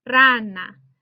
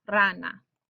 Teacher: the verbal stress falls on that r a that first syllable or second from last syllable